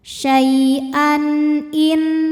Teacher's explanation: Maka tanwin dibaca jelas n syaian in juga sama izhar halqi ya karena nun sukun menghadapi huruf tenggorokan yaitu hamzah a maka nun dibaca n jelas